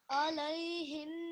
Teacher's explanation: Try to read that again with more of a nasal sound.